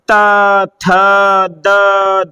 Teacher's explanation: क्योंकि बिना दांतों के जीव टकराए इनका उच्चारण हम कर नहीं सकते